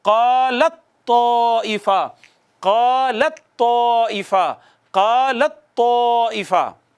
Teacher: اب لام کو ڈائریکٹ تا سے پڑھیں گے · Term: ادغام متجانسین